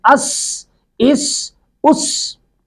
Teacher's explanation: سین پر بھی سٹی کی آواز آئے گی